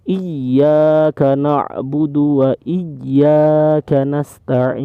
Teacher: Jadi gak boleh bacanya iya karena itu salah ya teman-teman, itu salah. Jadi ini bacaannya harus ditekan ya karena ada tasdid iyanya